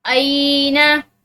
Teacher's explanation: हमजा के बाद या साकिन है तो इसको एक अलिफ की मिकदार खींच कर पढ़ेंगे